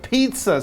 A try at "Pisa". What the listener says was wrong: I think you may be a little confused on the pronunciation of the word Pisa. It's not pizza, but it's Pisa.